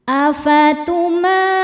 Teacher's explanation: Karena mim berharakat fathah panjang maka cara bacanya panjang dua harakat. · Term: mad thobi muqaddar